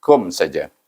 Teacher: Tetapi dia pun digabungkan dengan mim yang mati dengan baca dengan izhar syafawi bunyinya kum. Tapi satu harakah, jangan didengungkan.